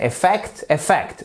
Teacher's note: votre seconde syllabe, c'est elle qui est porteuse de ce fameux stress qui est l'accent tonique